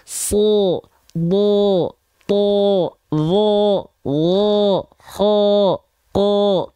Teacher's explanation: huruf-huruf tebal ketika fathah pasti condong ke vokal o, karena pangkal lidahnya naik.